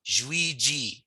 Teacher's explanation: the ZH is sort of a soft J, a J sound, and the last J is a hard J